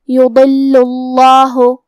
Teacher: پھر یہاں لام پہ تشدید ہے تو ہم 2 حرف کے برابر حرف اللام کو پڑھیں گے جو کہ اس پہ پیش ہے، لہذا اس کے بعد لفظ الجلالہ کا مطلب کلمت اللہ کا حکم ہے تفخیم تو ہم یہ کلمہ کو موٹی آواز میں پڑھیں گے